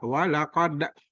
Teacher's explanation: huruf ko ini kalau dimatikan bacaannya bersifat kol-kolah.